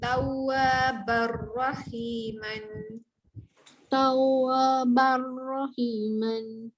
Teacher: baca ban, masuk bunyi ra jadi bar panjang.